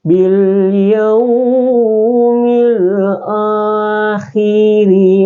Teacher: Jadi ro-nya itu berbaris di bawah, dibaca tipis. Tidak boleh dibaca takhim. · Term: ra tarkik